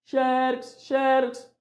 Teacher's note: é na penúltima sílaba que nós vamos colocar a sílaba mais forte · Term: paroxítona